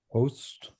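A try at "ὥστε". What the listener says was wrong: Hoste. You say that epsilon at the end. Hoste.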